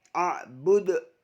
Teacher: Abudu qalqalah kubro, karena huruf dal yang merupakan huruf qalqalah pada akhir kalimat. Abud, membacanya dipantulkan.